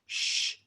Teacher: so again you're curling your tongue way back as opposed to an sh sound that we would normally make in english which is right behind our teeth sh so this one will be a lower pitched sh sound